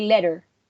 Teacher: in australian english the letter t is frequently softened making a sound closer to an american d so instead of saying um letter letter really strong they would